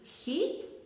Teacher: у позиції перед буквою і вимовляється звук х пом'якшено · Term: М'який